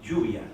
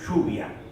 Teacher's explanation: es un yeísmo sordo, no sonoro